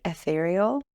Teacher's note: At the beginning of this word we have a short /ɛ/